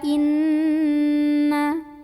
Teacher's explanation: Maka cara membunyikannya adalah didengungkan dulu, ya, ditahan dulu sampai bergetar halus ke hidung, bunyi an-nya yang ditahan. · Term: gunnah musyaddadah